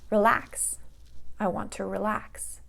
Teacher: also verb, 2 syllables, relax, and the stress is going to go on the last syllable. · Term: stress on the last syllable